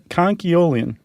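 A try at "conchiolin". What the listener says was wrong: Yeah, you're throwing that L in there. It's very easy to want to do. I get the urge.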